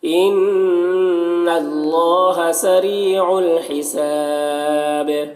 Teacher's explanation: نون مشدد غنہ ہوگا اور اللہ کو پر پڑھیں گے۔ سری را کو باریک پڑھیں گے اور یہاں پر یا مدہ ہے، ایک الف کے برابر کھینچ کر پڑھیں گے۔